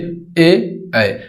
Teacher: कंठ और तालू से मिलाकर बोला जाता है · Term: कंठ एवं तालवी